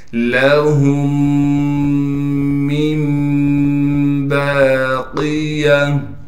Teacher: دیکھیں چھوٹی سی میم لکھی ہوئی ہے، اسے اقلاب کا قاعدہ کہتے ہیں، یعنی نون ساکن کے بعد جب با آ جائے تو پھر نون کو میم سے بدل دیں گے۔ اب ان تینوں میموں کو ایک ساتھ پڑھنا ہے غنہ کے ساتھ۔